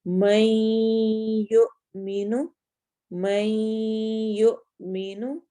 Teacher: جب ہم اس کو پڑھیں گے تو ہم میم کو یا کے اندر اس طرح داخل کریں گے، نون کی ساؤنڈ ختم، ہو جائے گی اور وہ دونوں ایک دوسرے کے ساتھ مل کر ادا ہوں گے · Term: ادغام